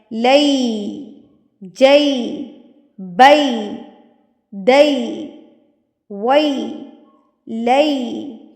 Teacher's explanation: بالکل ہونٹ اسمائل کی طرح پھیل جائیں گے اور جو ہے آپ کی ای کی ساؤنڈ آئے گی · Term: یا لین